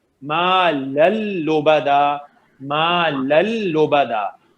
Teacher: نو sound of نون, نو غنہ